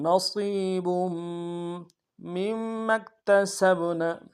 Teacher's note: وللنساء نصیب، نون کو نون سے ادا کریں گے، صاد کو موٹا ادا کرتے یا کے ساتھ ملانا ہے، یا مدہ کے دال میں کھینچیں گے.